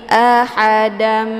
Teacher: harakat tanwin fathah dimasukkan ke dalam huruf mim dengan cara ditekan kemudian ditahan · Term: Idam Ma